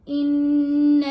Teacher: नून के ऊपर हम गुन्ना करेंगे और इसको आगे लाम के साथ मिला के पढ़ेंगे